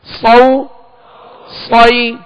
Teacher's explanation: صاد کو سیٹی کی آواز میں اور پر پڑھیں گے، موٹا پڑھیں گے